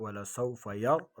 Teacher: را کو پر پڑھیں گے، را ساکن آگے زبر ہے، یرضا ایک الف کی مقدار، اس کو بھی کھینچیں گے۔